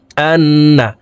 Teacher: তো এই হামজা তাসদিদওয়ালা নুনের সাথে নাকের বাসি থেকে 3 সেকেন্ড পরিমাণ গুন্নাহ করে ধরে রাখবো।